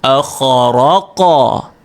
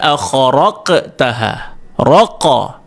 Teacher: bila dibaca qalqalah pada dia, ingat kita mesti bacakan dia, lantunan dia tu menggunakan vowel u.